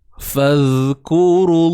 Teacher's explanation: Terus abaikan waw mat kat sini, masuk pada kalimah Allah.